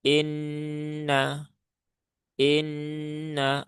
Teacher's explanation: Nah, maka ditahan dulu ya, ditahan dulu tiga harakat. Inna inna masukkan ke rongga rongga hidung.